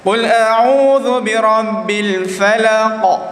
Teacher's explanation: Tebal. Dia lantunan, ada lantunan dan muncung sikit. Kerana sifat huruf qaf sifatnya tebal.